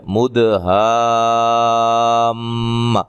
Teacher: یہاں میم مشدد ہے، میم کے اوپر شد ہے، لہذا یہاں غنہ کر کے پڑھیں گے